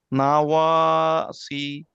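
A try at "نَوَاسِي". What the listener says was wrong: এটা ইয়া আছে টান হবে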